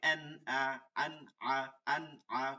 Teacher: নুন সাকিন তানবিনের পরে আসিলে গুন্না ছাড়া স্পষ্ট স্পষ্ট স্পষ্ট করিয়া পড়িতে হয় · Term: ইজার